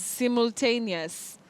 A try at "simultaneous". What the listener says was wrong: You say simul. That U is not pronounced, simul. So you have that, what we call the cluster of consonant sounds, simultaneous. Simultaneous, like we talk of simultaneous attacks. Yes, and you also say spontaneous. Not spontaneous, not simultaneous. Simultaneous, spontaneous.